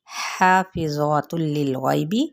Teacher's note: تا کی پیش تنوین پیش کو لام کے ساتھ ملائیں گے تو ادغام بلا غنہ کا قاعدہ ہوگا